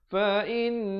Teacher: wajibul gunnah dengung 2 harakat